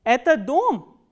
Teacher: asking a question is it a house so what happens is you start from the medium pitch and it goes up on the word which contains the question